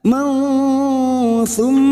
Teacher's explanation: mim yang bertasdid guna musaddada kita dengungkan selama 2 atau 3 harakat